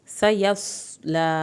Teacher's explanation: यहाँ पर सौत को पुर करके पढ़ें, सीन पे सीटी की आवाज़ निकालें,